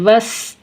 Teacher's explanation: سین حروف صفیریہ میں سے ہے، اس کو ادا کرتے وقت آواز مثل سیٹی کے تیز ہو جائے